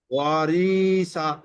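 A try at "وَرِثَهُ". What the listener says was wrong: আবার টান হয়ে গেছে ওয়ারিসা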